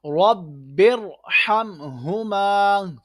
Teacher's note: یہ را ساکن سے پہلے زیر ہے، دوسرے کلمے میں ہے، اس لیے ہم را کو موٹا پڑھ رہے ہیں۔